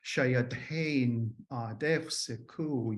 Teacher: it's got these falling pitches. They're not really distinctive, but they are definitely similar to the Southern speech